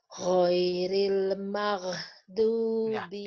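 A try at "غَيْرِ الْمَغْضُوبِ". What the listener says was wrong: Ditekan lagi, Bu. Tekan. Dia rokhah ya. Tekan. Mag. Mag. Lagi, tekan. Itu masih Ibu angkat. Kedengeran ini, Ibu angkat. Lidahnya Ibu angkat. Posisi lidah Ibu udah benar, tapi jangan diangkat dulu. Mag. Mag. Dipres terus. Jangan diangkat dulu, Bu ya. Ditekan dulu. Ghairil maghbu ya.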